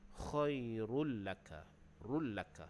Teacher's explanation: Rullaka di situ dhammatain bertemu huruf lam, hukumnya idgham bila gunnah. Jadi bacaannya tu kita dibaca dia tanpa dengung. Kita masukkan terus ke dalam huruf lam.